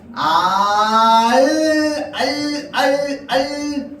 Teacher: 혀끝을 윗잇몸에 댄 채 공기를 양옆으로 흘려보내는 건 알 할 때 납니다.